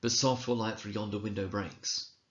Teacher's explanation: we find ourselves unthinkingly emphasizing every second syllable every second beat · iambs which consists of an unstressed syllable followed by a stressed syllable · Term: iambic pentameter